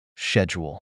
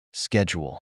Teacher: One classic example is the word schedule. In British English, it's often pronounced with a SH sound, like schedule. In contrast, Americans typically pronounce it with a hard K sound, like schedule.